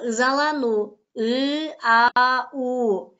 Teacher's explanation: Тилге карай баары жоон, эринге карай ы, а эринсиз, у эринчил. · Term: толук эмес сингармонизм